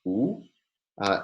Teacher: the high back tense vowel